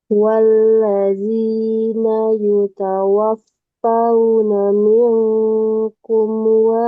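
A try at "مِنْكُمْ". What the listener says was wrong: Kumnya jangan sampai ada pantulannya.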